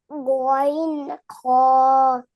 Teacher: 3 নম্বর হলকের শেষ ভাগ হইতে গইন খ